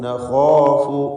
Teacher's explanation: ഇന്നന നഖാഫു ഖാഇനും അലിഫിനും തഫ്ഖീം.